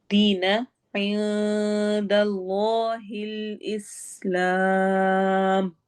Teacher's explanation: ऐं में नून की आवाज को छुपाएंगे